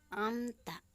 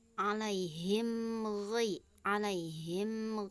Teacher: bunyi mim sukun disuarakan dengan terang dan jelas tanpa berdengung di bibir dengan mulut tertutup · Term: izhar syafawi